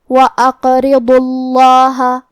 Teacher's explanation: کلمت اقرضوا میں ہم حرف القاف کو ہلاتے ہوئے یہ کلمہ کو پڑھیں گے کیونکہ یہاں قاف کا حکم ہے قلقلہ · ضاد حروف التفخیم میں سے ہے. پھر یہاں لفظ الجلالہ مطلب کلمت اللہ کو ہم موٹی آواز میں پڑھیں گے · را کو ہمیں پتلی آواز میں پڑھنا ہے کیونکہ اس کے نیچے زیر ہے · ضاد کو ہم موٹی آواز میں پڑھیں گے. ضاد حروف التفخیم میں سے ہے